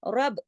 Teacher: सख्ती से जोड़ेंगे बा के साथ क्योंकि बा पे तशदीद है। तशदीद की वजह से पता हमें चलता है कि दो हुरूफ हैं।